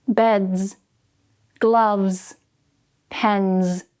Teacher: make sure you're getting that vibration, not pence, pens. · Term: Z sound